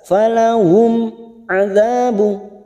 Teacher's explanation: mim sukun bertemu Ain Idhar syafawi kita baca jelas falahum adabu D fathah bertemu Alif dua harakat adabu dua harakat